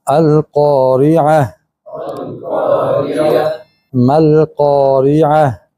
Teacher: जब हम अल-क़ारिअह पढ़ेंगे तो ता पर वक्फ करते हुए आवाज़ कैसे आएगी? हा की आवाज़ आएगी।